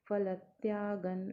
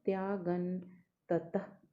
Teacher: ग के ऊपर जो अनुनासिक है उसका उच्चारण न रहेगा क्योंकि अगला वर्ण त है